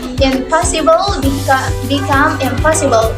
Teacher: The word n changed to the word m because of the following bilabial p. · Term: regressive assimilation